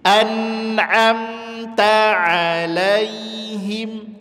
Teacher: Ain huruf tipis Jangan dibaca Anom gak boleh